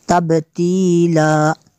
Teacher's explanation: double زبر جو ہے یہ وقف میں الف سے چینج ہو جائے گی